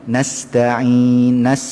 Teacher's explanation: Sifat huruf sin tu dia memang dia ada desiran angin, tetapi tidaklah selalu bunyi terlalu kuat ya.